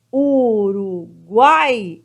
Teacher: é a última sílaba forte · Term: oxítona